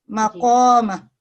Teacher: اور یہاں بھی آپ نے مقامہ جو پڑھا، یہ اس میں بھی قوف جو ہے وہ تھک آواز سے پڑھا جانے والا ہے، مفخم ہے